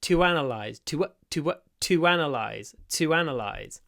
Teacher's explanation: quite often, a linking w appears between to and analyze.